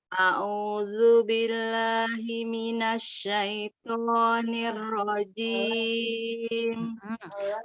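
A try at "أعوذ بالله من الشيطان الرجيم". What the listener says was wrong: Huruf to memang yang keluar vokalnya huruf o, tapi tidak boleh memonyongkan bibir, ya. A'udzu billahi minasyaitonir rajim. Syaiton. Jadi jangan dimonyongin. Syaiton. Ya, jangan memonyongkan bibir. Syaiton.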